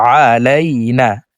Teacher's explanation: এ আইনকে হলকের মধ্যখান থেকে উচ্চারণ করব । আলাইনা আইন জবর আ লাম ইয়া জবর আলাই নন আলিফ